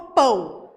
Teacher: tenho duas vogais não eu vou ter uma vogal e uma semivogal · Então, se eu pedisse, por exemplo, para vocês me dizerem como é que essa palavra é formada, vocês iam me falar que o A é a vogal e o O a semivogal